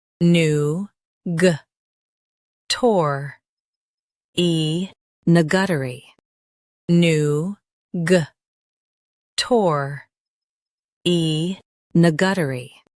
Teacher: In US, stress new. In UK, stress new and soften tuh-ree.